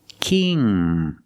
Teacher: It's more closed, king. And the ng makes a sound, touching the back of the tongue to the back of the roof of the mouth.